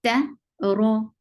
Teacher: Ra is heavy here because whenever ra is with fatha or dhamma, it is heavy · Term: heavy ra